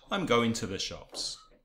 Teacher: So you have to and the, two schwas.